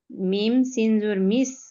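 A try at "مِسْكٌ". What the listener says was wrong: মিম সিন জবর মিস না, মিম সিন জের মিস।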